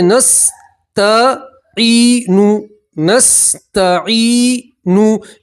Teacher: یا مدہ میں آپ حضرات ایک الف کے برابر کھینچیں گے